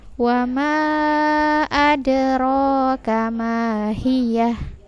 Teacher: Ada di sini ada sukun, dia qalqalah, ada dipantulkan. Ro panjangnya 2 harokat.